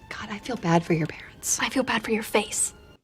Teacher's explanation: the pitch actually Rises higher on parents and that final stress word and then Falls that signals the end or finality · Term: falling intonation pattern